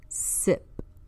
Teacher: s is unvoiced the air will pass over the tip of the tongue just touching your bottom front teeth